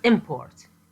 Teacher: when the word import is pronounced with the first syllable sounding stronger than the second English speakers hear it as a noun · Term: stress